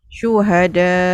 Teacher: Dia hukum dia mat wajib muttasil, tapi bila wakaf kita boleh tambah jadi 6 harakat sebab nak mematikan hamzah tu yang sukun mendatang tu arid disukun. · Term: mat muttasil arid disukun